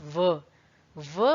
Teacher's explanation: व बोलते वक्त आप ऊपर के दांत और नीचे के होंठों का इस्तेमाल करते हैं। तो ये जो व है ये आपकी दंतोष्ठ ध्वनि है, याद रखिए।